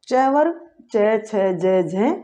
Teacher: ये किनका उच्चारण स्थान कहाँ से होता है, तालु से होता है